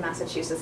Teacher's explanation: So the stress is on the 3rd syllable, and there's a little bit of stress on the 1st syllable.